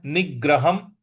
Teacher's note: ह के ऊपर जो अनुस्वार है उसका उच्चारण हमें म ले आना है। · यहां पर ग पर हमको आघात देना है